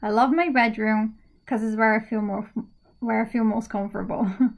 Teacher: because is often pronounced as cuz